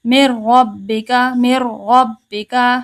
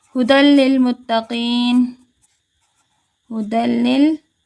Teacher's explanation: غنہ نہیں کریں گے، ادغام کریں گے، غنہ نہیں کریں گے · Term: ادغام بلا غنہ